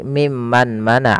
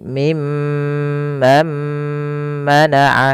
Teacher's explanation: Nah, di sini idgamnya dinamakan dengan idgam alghunah atau idgam ghunah, yaitu nunnya masukkan kepada huruf mim